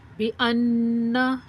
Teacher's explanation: नून मुशद्दद पढ़ते हुए नाक से आवाज़ आती है, उसी को ही गुन्ना कहते हैं